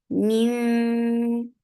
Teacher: you're keeping the sound in your nose and going towards the makhraj of dal. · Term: ikhfa